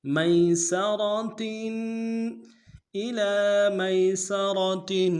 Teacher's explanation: میسرہ میں میم کو یا کے ساتھ ملانا ہے، یا لین بغیر کھینچے پڑیں گے، سین کی سیٹی باریک ہوگی، را کو موٹا ادا کریں گے، آخر میں تنوین ہے، غنہ کریں گے۔